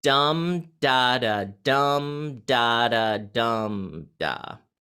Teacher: the dum is stressed and the das are unstressed.